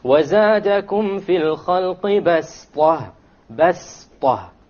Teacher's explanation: you don't pronounce it as a sad, you pronounce it as a seen, even though it is written as a sad.